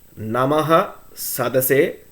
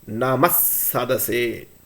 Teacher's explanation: The sound of the Visarga will be Is if the following Akshara is Sa.